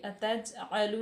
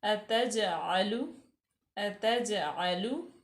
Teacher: क़ालू अतजअलु, हमज़ा जो है मफ्तू है, ता जो है वो भी मफ्तू है, जीम जो है वो साकिन है, तो ये हरूफ़ क़लक़ला में से भी है। तो यहाँ पे हम झटका दे के पढ़ेंगे, अतजअलु नहीं कहेंगे बल्कि अतजअलु अतजअलु।